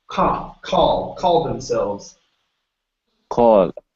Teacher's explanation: Instead of call, it's an ah sound.